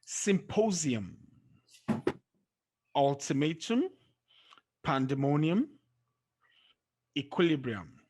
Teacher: Words that end with the letters UM, the stress is on the second syllable from the end